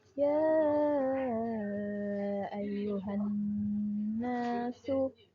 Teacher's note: Nah, ini ada tasydid dan nun bertasydid harus digunnah. Nah, didengungkan